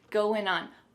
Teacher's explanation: we're gonna drop that G at the end of the word going.